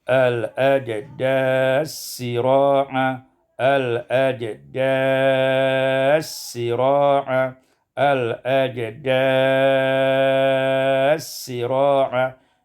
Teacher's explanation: Pada ayat yang ke-43 al ajdathi sira'a idgham sa fi sin, idgham sa pada sin menjadi al-ajdas sira'a, al-ajdas sira'a, al-ajdas sira'a.